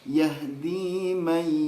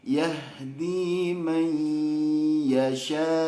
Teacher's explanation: Yahdi may. Nah, harusnya ngomong may-nya sambil ke hidung dan ditahan lama, kurang lebih 3 ketukan ya. 2 harokat tapi 3 ketukan karena menyempurnakan ke hidung ya, menyempurnakan ke hidung. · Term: idgham bi gunnah